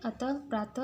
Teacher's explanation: इसका प्रयोग वर्ण के अंत में होता है। उच्चारण करने पर यह विसर्ग ह की ध्वनि देता है, जैसे अतः, प्रातः आदि।